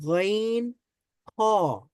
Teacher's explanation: হলকের শেষ ভাগ থেকে উচ্চারিত হয় গাইন খ